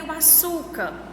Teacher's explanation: Na palavra açúcar, qual é a sílaba que eu pronuncio mais forte? Então, é o su. Então, nós vamos ver aí que ela é uma paroxítona, que é a penúltima sílaba da palavra, que é a palavra mais forte.